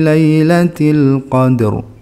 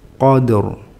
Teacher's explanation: Jadi dalnya tetap memantul. Terus roknya ya tetap bergetar dan tebal. Qad sama roknya qadr.